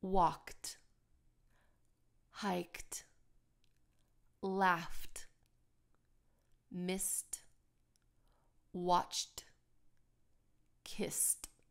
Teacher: a lot of these verbs end with kind of a voiceless consonant such as p k f s and T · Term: t sound